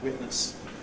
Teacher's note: a casual witness with a glottal stop